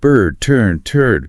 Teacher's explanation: That R heavily colors the vowel sound.